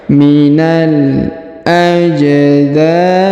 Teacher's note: Huruf ja berharokat sukun, maka kita pantulkan atau kita qalqalahkan